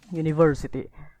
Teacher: Primary stress di sini tuh terlihat ada di suku kata ketiga, yaitu setelah kata ni, university, dan secondary stressnya itu jatuh pada suku kata pertama, yaitu kata sebelum you.